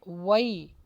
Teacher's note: واو پر ہونٹوں کو گول کیجئے